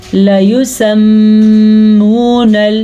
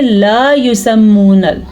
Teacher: لام زبر لا، اس کو لمبا نہیں کرنا، لمبا کرنے سے معنی زمین اور آسمان کے فرق کے ساتھ ہو جاتا ہے، جیسا کہ ہاں اور نہ کے معنی میں ہے یہ۔